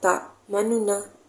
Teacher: dia tidak berubah harakatnya dan suara perlahan, tidak sangat jelas dan sedikit cepat. Dia sedikit cepat, dia tak seperti ishmam. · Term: arum